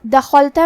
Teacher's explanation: کلمت دخلت میں یہاں حرف الخاء ہے، ہمیں خاء کو حلق کے اوپر والے حصے سے پڑھنا ہے. خاء حروف التفخیم میں سے بھی ہے تو ہم یہ حرف کو بھاری آواز میں پڑھیں گے.